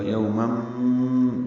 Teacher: تنوین کے بعد میم آنے کی وجہ سے یومم یہ ادغام ناقص ہے، غنہ کے ساتھ ہوگا